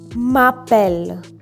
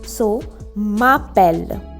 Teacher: M and A has a liaison, so we read it as one. M'appelle. A consonant and a vowel always has a liaison.